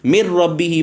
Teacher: और अगर 2 आ जाएँ रा लाम बग़ैर गुन्ने वाला, तो यहाँ पे मिर रब्बी ही पढ़ेंगे, गुन्ना नहीं होगा।